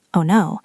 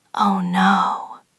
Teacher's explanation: If I say it flatly, oh no, it sounds sarcastic. You have to drop your jaw and lengthen the vowel.